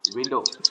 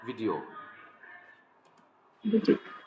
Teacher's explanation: The lip doesn't touch when it comes to W. But when it comes to V, the lip touches